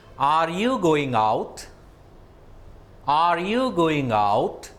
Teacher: in rising intonation towards the end of the sentence the tone rises reaches a higher level and it is used for asking a question